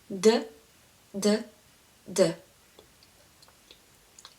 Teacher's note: it actually sounds a bit like in between D and T. So you put your tongue at the back of your upper teeth where you have your gum, and push it a little bit stronger than English D.